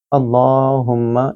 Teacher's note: لام کو موٹا پڑھیں گے، اس سے پہلے زبر ہے، हुम्मा मीम मुशद्दद है, यहाँ मीम के ऊपर गुन्ना किया जाएगा।